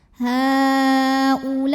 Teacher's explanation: Mad tabi'inya alif sebelumnya fathah, hamzahnya i pada kata ulai. Maka lamnya dipanjangkan boleh 4 boleh 5 harokat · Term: mad wajib muttasil